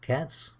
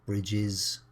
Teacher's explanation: they're pronounced in 3 different ways: cats with a S, dogs with a Z, and bridges with an IS. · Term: plurals with S